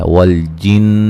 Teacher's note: والجن نون مشدد پہ غنہ ضروری ہے